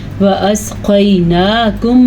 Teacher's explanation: میم ساکن کے بعد جب متحرک میم آ جائے تو وہاں پہ ادغام شفوی کا قاعدہ ہوتا ہے. ان کو آپس میں ملا بھی دیتے ہیں اور اس کے اوپر غنہ بھی کرتے ہیں